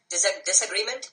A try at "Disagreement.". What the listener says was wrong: Was that a question or a statement? How about you say it like a statement then?